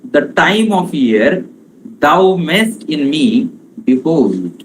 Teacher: Behold, be is unstressed, hold is stressed. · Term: iambic pentameter